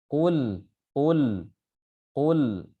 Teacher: Yang dipakai adalah lidah bagian depan. Akan tapi angin itu keluar dari sampingnya. Nah, keluar dari sampingnya. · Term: sifat al-inhiraf